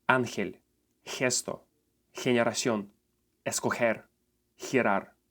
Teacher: it will make the sound he, which is the same sound as letter h makes in words here or horse